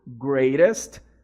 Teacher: E aí você pode fazer esse som de R aqui no T, né, no greatest